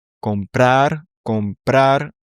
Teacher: tu as le prar, la fin du mot, qui est accentué